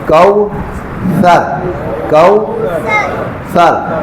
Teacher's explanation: زبان کو تھوڑا سا باہر لائیں اور زبان کی نوک کو کہاں رکھیں گے؟ یہ اگلے 2 دانتوں کا سرا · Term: ثا